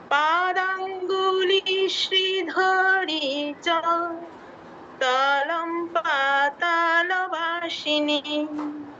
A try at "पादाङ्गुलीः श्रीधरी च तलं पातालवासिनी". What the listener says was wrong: ঠিক আছে, দন্তস্বর উচ্চারণটা আরেকটু ঠিক করতে হবে। ওয়াসিনী, ওয়াসিনী নয়, ঠিক আছে। আর আমাদের ধতে একটু দীর্ঘ হয়ে গেছে। শ্রীধরী, এখানে ধতে দীর্ঘ হয়ে গেছে, এটা দীর্ঘ করা যাবে না।